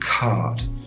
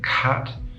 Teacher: the low back vowel is long in duration cut is short